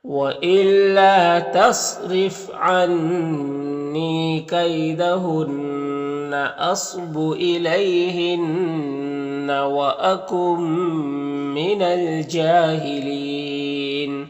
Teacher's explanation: جیم میں کھڑا زبر ایک الف کے برابر کھینچیں گے